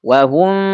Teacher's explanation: Kalau hum ini jelas izhar tapi ini gak ini samar mimnya. Suara em di huruf mim itu samar wahum. Nah selain disamarkan kemudian didengungkan. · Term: ikhfa syafawi